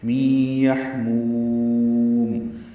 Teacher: مو کو لمبا کریں گے اور میم میں ہونٹ ساکن ہونٹ بند کر لیں گے